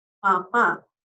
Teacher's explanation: La M, de igual manera, es bilabial porque necesitamos que nuestros dos labios se junten para producirlo. Es imposible decir M con la boca abierta. · Y la M es nasal porque el escape del aire se da por la nariz. No puedo decir M o una palabra con M si es que yo tengo la nariz tapada.